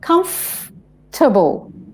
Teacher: there's a FOR in the middle, but we don't say it